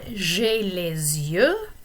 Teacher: don't forget about the liaison between lay and you